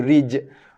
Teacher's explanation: Jim ni je huruf qalqalah. So lantunkan rij. Rij, tak nak rich, bukan rich tapi rij.